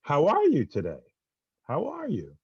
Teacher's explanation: Like when I ask a question, the tone of my voice goes up. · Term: up lilt